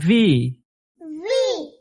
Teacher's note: উপরের দাঁত আর নিচের ঠোঁট লাগিয়ে ভি।